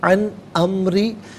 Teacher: را کے نیچے زیر، را کو باریک کر کے پڑھیں گے